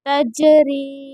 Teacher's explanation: یا ساکن سے پہلے را کے نیچے زیر ہے، اس لیے یہاں پر یا مدہ ہوگا اور اسی لیے اس کو تھوڑا کھینچ کر پڑھیں گے را کو